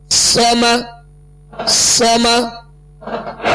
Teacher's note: صاد کو پر پڑھیں گے اور اس میں سیٹی کی آواز پیدا ہوگی